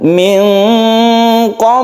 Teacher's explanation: itu karakter dari ikhfa ya ikhfa itu antara izhar dan Idam tidak dimasukkan ke huruf berikutnya tidak pula jelas dan terang tapi dia disamarkan